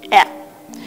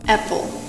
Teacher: откройте рот широко, распластайте язык. Кончик языка должен упираться в нижние зубы, а его задняя часть слегка приподниматься. Представьте, что вы тянетесь к яблоку, которое висит на ветке, и хотите его откусить. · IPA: [æ]